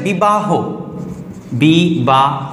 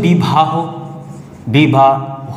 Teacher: এই যে বটা উচ্চারণ হলো ভ, অর্থাৎ অল্প প্রাণটা হয়ে গেল মহাপ্রাণ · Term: মহাপ্রাণী ভবন